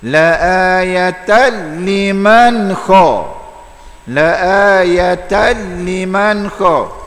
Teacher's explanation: idgham bila ghunnah, tak boleh dengun, tak mau baca la ayatan tambah ginnaning pula.